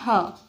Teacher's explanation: स्वर यंत्रीय व्यंजन, जो कि स्वर यंत्रों की सहायता से होते हैं